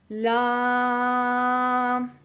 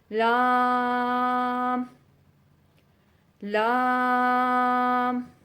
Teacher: جو آخری داڑھ ہوگی اس داڑھ کے ساتھ اور اس کے ساتھ والے دانتوں کے ساتھ جب زبان کا کنارہ لگے گا تو لام ادا ہوگا